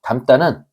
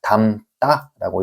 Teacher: 어간 뒤에서 어미로 시작하는 디귿이 이렇게 쌍 디귿으로 바뀌는 현상을 우리는 된 소리 되기라고 부릅니다. 담다라고 이렇게 하는 거죠.